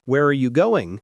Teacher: if you ask an information question like, Where are you going? your voice falls at the end.